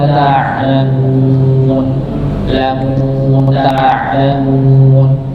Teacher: Ain ini bukan dibaca jahar ya, atau tertahan seperti hamzah, tapi dia dibaca mengalir. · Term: huruf ain